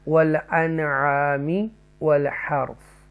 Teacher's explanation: okay, نون ساکنہ کے فوراً بعد یہاں دیکھیں یہ عین حروف حلقیہ میں سے ہے, تو ہم نے اس کو نون کی آواز کو ساؤنڈ کو کلیئر پڑھنا ہے, اظہار کریں گے